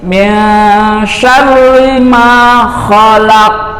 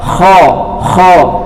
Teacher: Kita ulang lagi, min syarri ma khalaq, kho-nya harus ngorok, kho. Kalau ho itu cenderung ha, bisa jadi ha, jadi harus ngorok biar benar hurufnya menjadi kho.